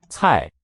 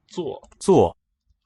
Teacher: C is a t sound, like the Z in pizza, t with extra air coming out. 坐. 坐 That Z is basically the same action, but without the puff of air.